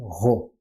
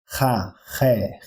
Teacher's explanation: Nós vamos pronunciá-lo com uma leve aspiração. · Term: espírito rude